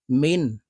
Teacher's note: নুন সাকিনের পরে ইজহারের হরফ হামজা আসছে তাই এই নুনকে গুন্না ছাড়া স্পষ্ট করিয়া পড়বো